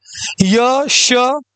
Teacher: तालव्य क्या होता है? यानी तालु से जिसका उच्चारण होता है।